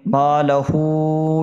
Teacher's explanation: ما لہو، ما میں الف مدہ ہے، کھینچ کے پڑھیں گے، ہو میں الٹا پیش ہے، واو مدہ کے برابر کھینچ کے پڑھیں گے